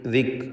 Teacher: കാഫ് ഹംസ് നൽകി വെച്ചിരിക്കുക. ഹംസ് എന്ന അതിൻ്റെ സിഫത്ത് അതിന് നൽകണം.